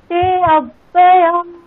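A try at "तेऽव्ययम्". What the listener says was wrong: Madam আজকে ক্লাসে আলোচনা করা হলো এই যে অংশটা তে অব্যয়ম, এটার কোনো উচ্চারণ হবে না। অকার ছিল তার ইন্ডিকেশন। তেব্যয়ম, ইয়েস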